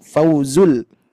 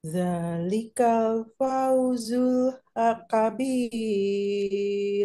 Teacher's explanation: Lin itu lembut ya. Dari fa ke wawu nyambung, tidak fau, tapi fauzu.